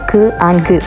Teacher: Sounds produced at the വീലം or soft പാലറ്റ്, such as ഖ് ആൻഡ് ഗ്. ഇവയാണ് വീലാസ് എന്നറിയപ്പെടുന്നത്. · നാക്കിൻ്റെ ഏറ്റവും പുറകു വശം ഏറ്റവും മുകൾ വശത്തിലേക്ക് പോയി ടച്ച് ചെയ്യുകയും എയറിനെ ക്ലോസ് ചെയ്യപ്പെടുകയും പിന്നീട് അത് റിലീസ് ചെയ്യപ്പെടുകയും ചെയ്യുന്നു. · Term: വീലാർ സൗണ്ട്സ്